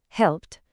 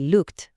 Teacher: El segundo sonido es una T corta y seca, como un golpecito. Se usa cuando el verbo acaba en un sonido sordo.